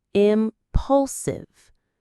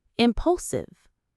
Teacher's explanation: The stress is on that middle syllable.